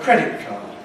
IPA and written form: ˈkredɪt kɑːd (credit card)